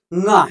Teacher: ङ को ङ ना उच्चारित करके अंगा उच्चारित करते हैं, अंगा, जो कि गलत है। ये अंगा नहीं ङ है।